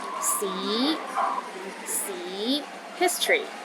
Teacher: the second tones start with the low pitch and Rises to a high pitch